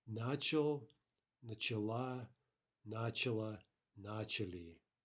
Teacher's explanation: We see that the feminine ending is stressed. · In this case, as sometimes happens, in all the other forms, the stress jumps back onto the prefix.